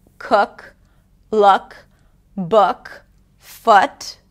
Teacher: And then the lax U, it's like the casual partner of the tense U. It's more relaxed.